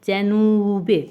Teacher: U yəni qapalı saitda uzanma var